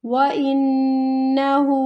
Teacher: وَإِنَّهُ، واو کو لمبا نہیں کرنا، حمزہ کو نون کے ساتھ ملاتے ہوئے نون مشدد پر یہاں پہ ہمیں غنہ کرنا ہے، 2 سیکنڈ تک یہاں پر رکنا ہے